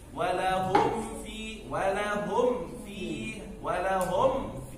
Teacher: قف على الميم ثم اقرأ الفاء لا سرعة